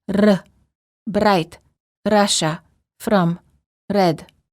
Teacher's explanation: the tip of the tongue touches the gum ridge, similar to the D sound, but with a quick and repeated motion. It sounds like this: R, bright, Russia, from, red. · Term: rolling R